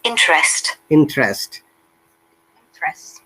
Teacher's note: After R, that E is schwa sound.